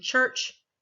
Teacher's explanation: something between a fricative and a stop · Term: affricatives